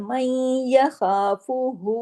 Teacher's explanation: उसमें या में जुड़ रहा है तशदीद की वजह से, लेकिन नून की आवाज भी कहीं कहीं पीछे आ रही है, इसको इदगाम नाकिस कहते हैं